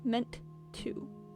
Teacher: just a little glottal stop on meant to